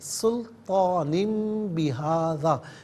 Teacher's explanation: سلطان میں نون کے نیچے دو زیر کی تنوین ہے، تنوین کے بعد بہذا میں با آ رہا ہے، تو تنوین یا نون ساکن ہو اس کے بعد با آئے تو اسے میم سے چینج کر کے میم کی آواز کو غننے کے ساتھ ادا کرتے ہیں۔ تو سلطان بہذا پڑھنا غلط ہے، सुल्तानिम बिहाज़ा, मीम की आवाज़ को गुन्ने के साथ अदा करेंगे।